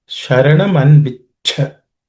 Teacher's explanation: The last letter is again a compound consonant made up of ich and ich. The second letter in that compound consonant is aspirated with ch.